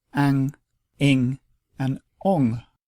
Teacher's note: Phonetically, the niggahīta is not a separate sound, but it indicates a nasalization of the preceding vowel, and it only joins with short vowels to form ang, ing, and ong, and these usually appear at the end of words.